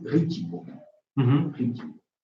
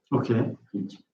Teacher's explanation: Il y a un i qui palatalise le te.